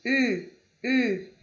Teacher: Observe que é o I, mas com o bico do U. Eu vou falar o I, mas com o bico do U.